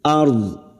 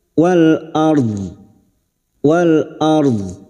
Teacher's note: atau alif lam qamariah Wal ARD karena kita wakaf di sini ro sukun yang sebelumnya fathah kita baca tafkim